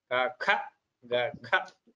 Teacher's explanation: The second and fourth letters are Mahaprana. Ka, Kha, Ga, Gha. Those are the second and fourth letters in each Varga are called Mahapranas. You give them more prana, you give them more stress.